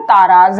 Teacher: अब ता में आ का स्वर है, दीर्घ है। रा में क्या है? आ का स्वर है, दीर्घ है।